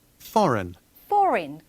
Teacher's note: 모음이 있는 부분에서 R 다음에 모음이 이어지는 부분에서는 분명히 R 사운드를 썼죠